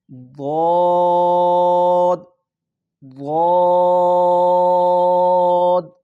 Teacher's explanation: زبان کی اوپر جتنی پوری کروٹ ہے اس کو اوپر والی داڑوں کے ساتھ ٹکرائیں اور اس لفظ کو ادا کرنے کی کوشش کریں۔